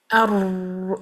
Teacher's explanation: वरना अगर हमने इसको यहां पर फिर बिल्कुल बंद कर दिया अर आप कह के देखें पूरी जुबान को यहां कवर कर दें बिल्कुल पैसेज ना छोड़ें आपका र नॉर्मल प्रोनाउंस नहीं होगा अर यूं होगा और जुबान स्ट्रगल करेगी बहुत वाइब्रेट करेगी क्योंकि वहां से आवाज बाहर निकलने की कोशिश कर रही है। जुबान को हल्काहल्का हल्का रखें।